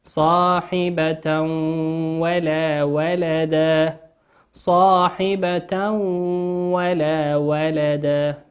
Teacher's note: وقوله سبحانه وتعالى: صاحبة ولا ولدا، صاحبة ولا ولدا، تنوين أتى بعده حرف الواو، والواو من حروف الإدغام بغنة، يغن بمقدار حركتين